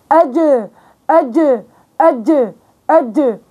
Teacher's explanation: هو انفجاري بينفجر بوسط اللسان والحنك الاعلى بمكانه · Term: حرف الجيم